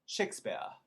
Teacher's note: in america we say shakespeare with the r